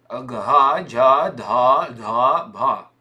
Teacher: Это третий столбик. Четвертый столбик. Звонкий с придыханием.